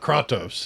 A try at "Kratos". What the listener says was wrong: Kratos. Kratos. It's Kratos. That sounds like bargain bin version. It's got the wrong A in it.